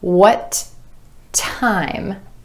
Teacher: I'm holding that tongue up in the position for the final T and just releasing it into the beginning T at the next word.